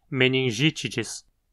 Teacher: Aqui temos um I curto na penúltima sílaba. Então a palavra é proparoxítona